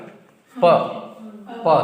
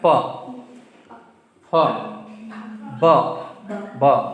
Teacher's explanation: देखो दोनों ओष्ठ मिल रहे हैं। प फ ब ब दोनों मिल रहे हैं ना।